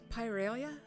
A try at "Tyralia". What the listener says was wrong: That's right, Tyralia with the T.